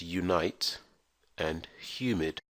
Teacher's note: the letter U can also be pronounced with a Y, as in the words unite and humid